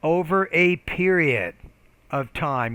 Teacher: you need to pronounce that p with more aspiration